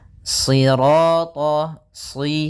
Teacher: karena shad itu pangkal lidah kita terangkat dan melekat karena dia huruf idbaq